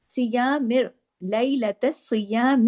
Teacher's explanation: لیلۃ الصیامی سختی سے جوڑنا ہے، سواد کو ہیوی کرنا ہے اور ڈبل سواد ہے